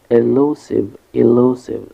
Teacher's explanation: The stress is on the second syllable, lu, elusive.